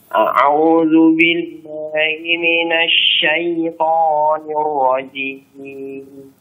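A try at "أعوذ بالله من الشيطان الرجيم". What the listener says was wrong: Hati-hati tonya ya. Jangan syaitan, jangan masuk hidung. Syaitanir rajim. Nanti ainnya dilatih jangan a'u, jangan ditekan ya. A'u biasa. A'u.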